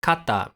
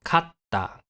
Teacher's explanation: Finally, a small tsu is used to lengthen the following consonant. The consonant is held for some extra time before being released into the following vowel.